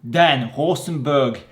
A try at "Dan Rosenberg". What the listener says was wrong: Oh, you say it like a German. In Israel, it will just be Dan Rosenberg. So the R is a lot less aggressive and it's just not a German accent.